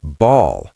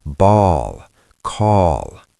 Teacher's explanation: the tip of your tongue might still go up, but the back of your tongue rises up toward the soft palate. It creates a hollow shape in your mouth. That is why it sounds dark. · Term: dark L